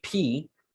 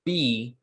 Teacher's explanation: if you feel your throat when you say P, you'll feel no vibration. But if you say B, B, B, B, you do feel vibration. So in the consonant chart, the sounds on the left are voiceless and the sounds on the right are voiced.